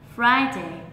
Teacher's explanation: Chỉ cần nhớ là gì, không đọc là Friday, bởi vì khi đọc là Friday là a, nghĩa là mình đã nhấn vào hai cái âm tiết này như nhau, trong khi là thực tế là trong âm rơi ở âm tiết đầu tiên, thế nên mình sẽ nhấn vào trong âm ở âm tiết đầu tiên nhiều hơn, là Fry kéo dài